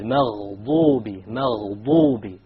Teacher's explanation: It is very important that you don't make a dad into a dal or a d sound, because the dal comes from the middle of the tongue, but the dad, remember, it comes from one entire edge of the tongue along with the molars